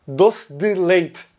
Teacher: Então ele fala doce de leite, algo mais ou menos assim. A letra E é praticamente omitida. Ela não vira I.